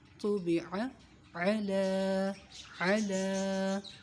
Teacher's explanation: عین کی آواز وسط حلق سے